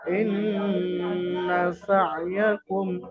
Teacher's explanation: তো এখানে নুনের উপরে গুন্না, নুনের উপরে তাসদিদ এসছে, নুনে মুশাদ্দাদ এক আলিফ পরিমাণ গুন্না সহ পড়তে হবে। আর নুনের উপরে জাবার আছে, শুধু এক জাবারকে হারাকাত বলে, হারাকাত যুক্ত অক্ষরকে তাড়াতাড়ি পড়তে হবে, টান দেওয়া নিষেধ।